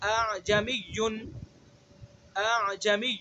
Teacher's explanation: تو حمزہ مسہلہ جیسے اعجمی، یہ تحقیق ہے، یعنی تحقیق کہتے ہیں خوب واضح اور صاف پڑھنے کو، اور اس کے درمیان کی جو آواز ہے وہ حمزہ تسہیل ہے